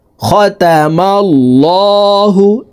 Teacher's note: এই লামকে ল অর্থাৎ মোটা করে পড়তে হবে, কারণ আল্লাহ শব্দের আগের হরফে জবর অথবা পেশ হইলে এই লামকে ল অর্থাৎ মোটা করিয়া পড়িতে হয়।